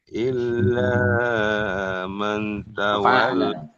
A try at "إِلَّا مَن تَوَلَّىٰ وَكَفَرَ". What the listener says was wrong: ini kepanjangan. Seayun saja. Illa man.